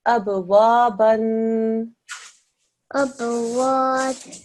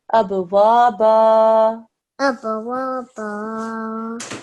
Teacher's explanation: in place of a tanween here, a fatha with alif will be pronounced instead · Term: alif madda